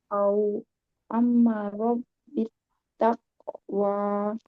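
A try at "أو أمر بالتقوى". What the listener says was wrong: Au lebih lembut lagi linnya. Au amaro.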